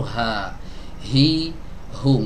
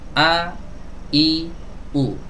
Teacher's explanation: huruf H enggak terlalu rapat ya karena dia memiliki sifat rokhowah